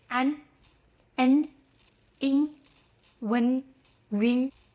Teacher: The key to all of them tongue tip touches behind your upper front teeth at the end · They all end with your tongue tip touching behind your upper front teeth. If you are not sure, try the pinch test. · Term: front nasal finals